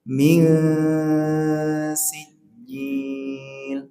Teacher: Kalau yang 2 pertama tadi dengung, kalau yang sekarang ini samar. Samar sambil disertai persiapan mengucapkan huruf yang kedua yaitu huruf sin